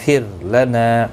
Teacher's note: را ساکن سے پہلے زیر ہے اس لیے باریک پڑھا جائے گا. نا الف مدہ ہے، ایک الف کی مقدار کے برابر کھینچ کر پڑھیں گے.